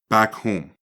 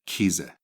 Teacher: If you say it fast, the sequence KH sounds like aspirated K